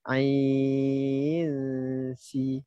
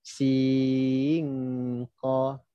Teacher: Tengok ain nak masuk kepada sin, kita ada dengung.